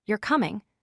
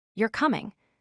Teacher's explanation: the same sentence is a statement if you use falling intonation